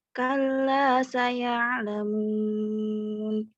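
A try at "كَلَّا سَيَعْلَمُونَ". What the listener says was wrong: Coba di ainnya dong. Di ainnya jangan dinaikin lidahnya. Kalla saya ya jangan lewat hidung. Ya, pokoknya di tengah-tengah tenggorokannya di sepiting. Kalla saya alamun ya. Nah, dan jangan kayak ada kosongnya, jangan dijeda, jangan putus. Kalla saya jangan gitu, ngalir. Kalla saya ya lamun. Nah, ditipisin ya, pokoknya dilatih sampai betul-betul nyempit tenggorokan itu.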